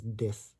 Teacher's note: for the hard th sound, we'll use the voiced da. This pronounced as dis.